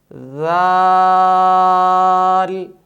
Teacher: صفت جہر کی وجہ سے اس حرف کی آواز میں بلندی ہوگی